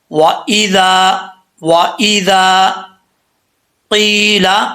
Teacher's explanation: ذال، ذال، یہ اس کا مخرج ہے، ٹھیک ہے۔ ذال کے آگے الف ہے تو ایک الف کی مقدار اس کو لمبا کریں گے